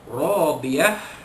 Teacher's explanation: ra alif di atas ra, dibaca ra itu tebal, ra tafkhim, ra alif di atas ra mad asli.